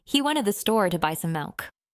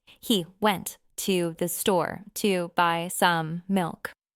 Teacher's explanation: The stressed words are went, store, buy, and milk.